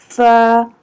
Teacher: Fa pronounced from the edge of the two top front teeth touching the inside part of the lower lip